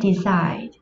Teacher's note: Decide là động từ có hai âm tiết, trọng âm được rơi vào âm tiết thứ hai.